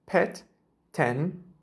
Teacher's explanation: Türkçedeki e sesi biraz daha kısa